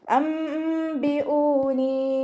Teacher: നൂൻ സാക്കിനിയെ മീമാക്കി മാറ്റിമറിച്ച് ഉണ്ണയോട് കൂടി ഓതി കൊടുക്കുക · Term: ഇഖ്ലാബിൻ്റെ മീമാണ്